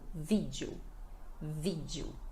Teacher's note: E o final fica com som de U